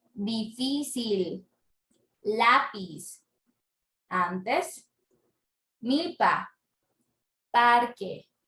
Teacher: La sílaba tónica está en la penúltima. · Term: grave